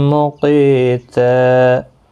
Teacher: تنوین کے بعد یرملون کا میم ہے، ادغام مع الغنہ ہوگا، قاف مستعلیہ ہے، پر پڑھا جائے، قی یا مدہ بھی ہے، ایک الف کی مقدار کے برابر کھینچ کر پڑھیں گے۔